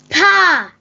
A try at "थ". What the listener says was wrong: Good pronunciation. Good. Very clear.